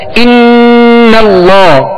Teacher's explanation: इसमें गुन्ना करके पढ़ेंगे क्योंकि नून मुशद्दद है